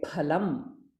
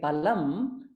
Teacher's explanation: If we do not enunciate that pa, mahaprana, and simply say palam, it will mean something different.